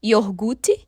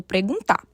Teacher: diversos falantes acabam trocando o r de posição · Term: transposição